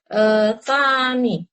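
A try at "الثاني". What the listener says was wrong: Iya, pakai alif lam. Asani ya. Iya, karena asani kalau tidak ada alif lam nanti kita bilangnya sanin gitu ya.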